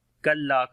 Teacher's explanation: Kaf we read in light sound, lam we long due to alif madda